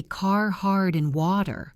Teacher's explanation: The R is strong and creates a growling sound in the back of the mouth.